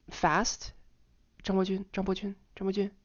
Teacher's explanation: The second syllable, which has a second tone, notice it barely changed its pitch compared to the 2 tones that are on either side of it.